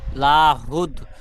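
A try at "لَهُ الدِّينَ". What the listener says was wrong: লা টান হবে না, লা টান হবে না, লাহুদ। লাহুদ হবে না, লাহুদ, লাম টান হবে না।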